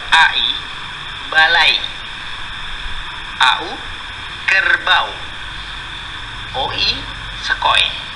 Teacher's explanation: Dalam bahasa Indonesia hanya ada diftong naik.